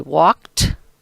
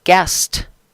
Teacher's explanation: the sounds that are next to the ed are both called voiceless consonants